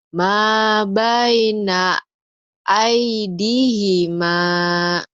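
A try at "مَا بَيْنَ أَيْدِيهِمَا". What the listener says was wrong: Ma baina aidihima aidihima aidihima. Ih-nya pendek. Ayo lagi.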